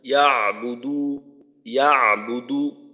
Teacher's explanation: তৃতীয় আয়াতে ফালইয়াবুদু, আইনের উচ্চারণটার ক্ষেত্রে দেখা যায় আইনের আওয়াজটা একটু অস্পষ্ট হয়ে যায়, আবার আওয়াজ চালু থাকার বিষয়টাও ঠিক মতো হয় না